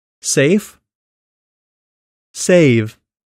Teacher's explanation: the vowel sound before the /v/ is typically longer than before its voiceless counterpart, the consonant sound /f/. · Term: vowel length rule